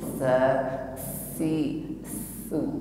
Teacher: Bukan ditarik ke belakang. Jadi ujungnya keluar sedikit dengan disertai sifat hamas, ada nafas yang mengalir tipis.